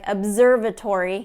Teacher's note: Observatory have that voiced consonant and then the S right after so that's going to get that Z that voiced sound to it